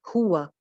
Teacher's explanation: हा की पेश पे होंठ गोल करने हैं और वाव पे भी होंठ गोल करने हैं